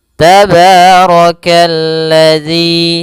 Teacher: Kemudian rnya dibaca tebal karena dia ro berharakat fathah.